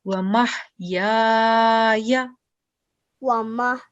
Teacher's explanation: Okay, over here we can see that we have letter ya that has a fatha stroke followed by letter alif, which is haruf madda. So we're going to prolong the sound for 2 seconds again